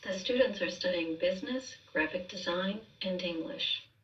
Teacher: with that list, we have that carryover telling the listener, I'm not done, here's a few more, and then ending